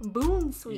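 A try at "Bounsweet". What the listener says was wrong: Yeah, you said sweat last time. It's sweet. Bone sweat. You said bone sweat last time.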